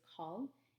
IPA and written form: kɔl (call)